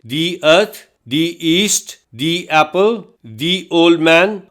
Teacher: THE کے لیے دا اور دی دونوں آوازیں موجود ہیں۔ اسے اس وقت دی بولتے ہیں جب اس کے بعد والا لفظ وائل ساؤنڈ سے شروع ہو